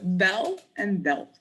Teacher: If l is at the end of the word, as in bell, or if it is followed by a consonant, as in belt, it's not really pronounced as L. It's more like O, or more like vowel sound. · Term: dark L